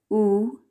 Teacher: u is a high back rounded vowel